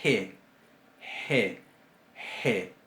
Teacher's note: Es sorda, es fricativa. Digo sorda porque no usa acción de las cuerdas vocales.